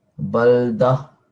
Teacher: Not baldat. So remember with the ta marbuta, it's going to change into a ha sound